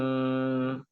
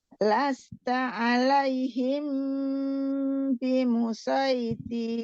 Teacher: Dengung karena mim ketemu dengan ba.